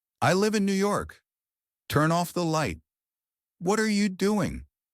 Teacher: Voice goes down at the end. It sounds confident, complete. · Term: falling intonation